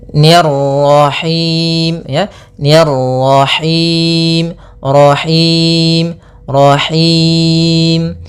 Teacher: tebal karena di sini ro tafkhim yaitu ro yang berharakat tasydid